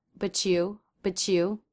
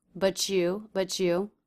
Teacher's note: You might hear a CH sound happening between but and you